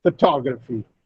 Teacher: this is a 4-syllable word, and the second syllable receives the stress